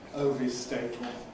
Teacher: lateral release from T to L